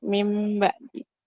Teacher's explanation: nun mati nun sukun atau tanwin itu bertemu dengan huruf ba maka bacanya itu nunnya diganti menjadi mim dan ditahan dua tiga harakat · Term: iqlam